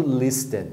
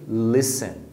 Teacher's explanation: Então é sempre listen, sem o T.